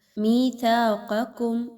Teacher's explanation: قاف موٹا حرف ہے اس کو موٹا پڑھیے، کاف باریک ہے، ٹھیک ہے۔ ایک حرف کی وجہ سے دوسرے کو موٹا نہیں کرنا۔